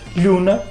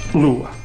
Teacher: O N, que existia entre 2 vogais, como na palavra luna, não é? Em mirandês conservou-se. E nós dizemos hoje lhuna, enquanto que em português caiu e deu lua.